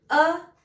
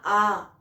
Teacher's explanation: दीर्घ का अर्थ ही होता है कि थोड़ा बड़ा, यानी कि एक जो उच्चारण हम करते हैं उसमें ह्रस्व एक होता है, उसमें जितना समय लगा और उसका दुगना समय लगता है दीर्घ में। अ में जितना समय लगा उसका दुगना आ उसका लगा